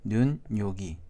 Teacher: 눈 플러스 요기에서는 눈, 요기, 니은이 추가된 걸 알 수 있죠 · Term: 니은 첨가